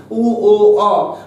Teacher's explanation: যখন আমরা উচ্চারণ করি মুখবিবরে আমাদের ওষ্ঠটা ছুঁচোর মতো হয়ে যায় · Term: কুঞ্চিত স্বর